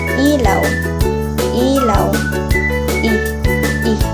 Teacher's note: Mataas at nasa harap ang dila tulad ng salitang ilaw.